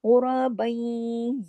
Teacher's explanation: फिर गुरा में गैन देखिए, गैन भी मोटा पढ़ा जाएगा क्योंकि मोटे हरूफ में से है, और रा पे जबर है इसलिए रा भी मोटा पढ़ा जाएगा। फिर बा दो जबर बन की तनवीन है, लेकिन उसके फौरन बाद तशदीद है।